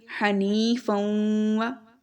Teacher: ناک میں آواز لے کر جا رہے ہیں، ادغام بھی کر رہے ہیں، فا کو واو کے ساتھ بھی ملا رہے ہیں، اور غنہ بھی کر رہے ہیں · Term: غنہ پلس ادغام